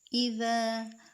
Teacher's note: ذال کو ایک الف کے مقدار پر کھڑا کریں گے کیونکہ یہ الف مدہ ہے